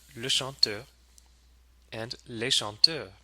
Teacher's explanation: it's not going to have a liaison either because it does not start with a vowel.